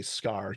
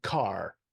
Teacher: being unaspirated so it's like the C in scar so like if you put your fingers in front of your mouth and you say scar you don't you don't get a big puff of air from the from the but if you say car then the